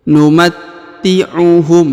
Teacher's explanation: huruf ta ditahan dan ditekan karena terdapat tanda tasdid